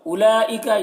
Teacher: اولئک یہاں پر دیکھیے حرف مد کے بعد حمزہ اسی کلمہ میں ہے تو یہاں پر مد متصل ہوگا. مد متصل کو 3 4 الف کے برابر کھینچ کر پڑھتے ہیں